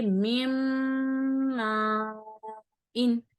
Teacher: یعنی غنہ بھی کریں گے اور میم کو میم کے ساتھ ملائیں گے بھی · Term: ادغام ما غنہ